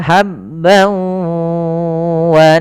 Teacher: yang tadi yaitu Idam bunna langkah pertama masukkan tanwinnya ke wau hilang suara nunnya menjadi suara wau kemudian ditahan gunanya maka habb wa